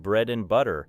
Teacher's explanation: When and is unstressed inside bread and butter, it may become very short, while bread and butter receive the stronger beats.